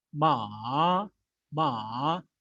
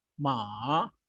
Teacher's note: It dips down, it comes down and then goes high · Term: third tone